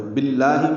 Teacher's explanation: باللہ میں با کو لام سے ملایا, بیچ میں الف لام نہیں پڑھا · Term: ادغام شمسی